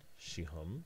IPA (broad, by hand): ʃihʌm